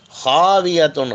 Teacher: خے کو حلق میں سے پڑھیں گے، بالکل حلق کا جو اوپری سرایا ایک دم اوپری